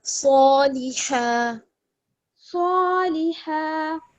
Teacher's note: सौ, सीन सीन की तरह नहीं, सौ मोटा करके पढ़ना है।